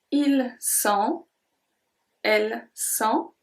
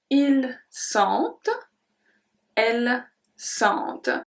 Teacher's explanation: the il and elle pluriel have a slight different pronunciation. We pronounce the T. When the first one, we don't pronounce the T or we don't pronounce anything at the end. · we don't pronounce the T or we don't pronounce anything at the end. It's just en.